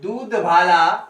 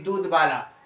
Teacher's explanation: तो यहां पर क्या है आपका महाप्राण ध्वनि किस में बदल गया, अल्प प्राण ध्वनि में।